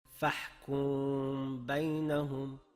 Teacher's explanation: talaffuzimizda biroz yengilroq g'unna ham bo'ldi va lablarimiz ba harfini g'unnadan keyin aytishga tayyor turdi. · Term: ixfo shafaviy